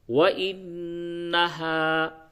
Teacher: نون کے اوپر تشدید ہے، غنہ ہوگا